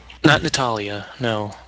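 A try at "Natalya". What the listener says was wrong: Why are you putting so much emphasis on the other A?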